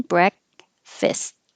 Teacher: So the K doesn't pronounce k, breakfast. Hold the K position, breakfast.